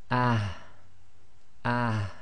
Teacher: So the soft ha will be pronounced as ah, ah. So you have to try and bring the ha from the bottom of your throat